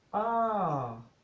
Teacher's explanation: So R, and then the opposite of this one is the falling tone. So you start high, you go higher, and then you go down